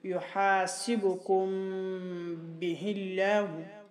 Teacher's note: میم ساکن کو ادا کرتے وقت ہونٹوں کے خشک حصہ کو نرمی کے ساتھ ملا کر صفت غنہ بقدر ایک الف خیشوم سے ادا کرنے کے بعد با فوراً ہونٹوں کے تر حصہ سے سختی کے ساتھ ادا ہوتا ہے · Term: اخفاء شفوی